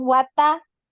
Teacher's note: Tab naik, dinaikkan, ditinggikan, suara anti tinggi ya, naik ya. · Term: qalqalah